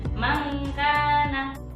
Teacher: Dan ikhfa adna masa dengungnya yang paling pendek.